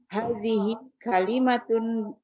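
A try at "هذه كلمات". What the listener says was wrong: Maknya dipanjangkan Bu. Hadihi kalimatun kata-kata.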